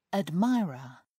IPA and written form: ədˈmaɪərə (admirer)